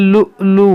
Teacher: देखिए यहाँ पर कैसे पढ़ेंगे, लाम हमज़ा पेश लु, यहाँ पर हमज़ा में झटका होगा, वाव नहीं पढ़ेंगे, यहाँ पर हमज़ा पढ़ेंगे।